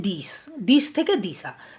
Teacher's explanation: তালব্য স এর সঙ্গে আ স্বরধ্বনির যুক্ত হয়ে গেছে অর্থাৎ স্বরের আগমন ঘটেছে · শেষে তালব্যস্বর সঙ্গে কিন্তু কোনো রকম স্বরধ্বনি যুক্ত নেই, কিন্তু পরে যখন দিশা উচ্চারণ করছি তখন কি হচ্ছে? তালব্যস্বরের সঙ্গে আ স্বরধ্বনির যুক্ত হয়ে গেছে, অর্থাৎ স্বরের আগমন ঘটেছে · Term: স্বরাগম